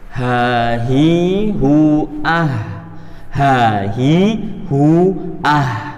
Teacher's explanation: Ha ini salah satu sifat dari ha yaitu al-hams, harus keluar hawa sedikit